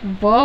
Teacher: ऊपर के दांत और नीचे वाला जो होंठ होता है वो इसका उच्चारण स्थान होता है दंतोष्ठ्य वर्ग का।